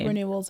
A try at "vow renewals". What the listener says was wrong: Because they're having vowel renewals, not vow renewals. Vow. I think you said vowel again.